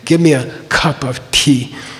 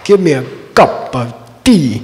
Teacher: in India because their language is more directly connected to Sanskrit they don't aspirate their consonants